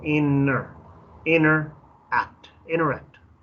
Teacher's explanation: La T casi no se pronuncia, es como interact